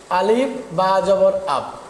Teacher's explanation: বা বর্ণের উচ্চারণ দুই ঠোঁটের মাঝখানে, দুই ঠোঁটের মাঝখানে।